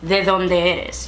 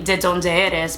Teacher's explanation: In Spanish, it's gonna sound a little bit more like the TH sound